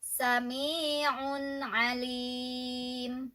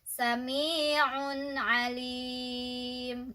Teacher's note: ya sami'un alim ya jadi lainnya punya dhomah tanwin di atasnya ada tanwin ketemu sama Ain itu izhar dibacanya jelas